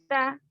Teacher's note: ता का मखरज जुबान की नोक ऊपर के दांतों के अंदरूनी हिस्से को लगेगी।